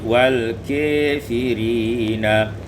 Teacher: imalatu fathatul kaf wal alif, diimalakan fathah kaf dan alif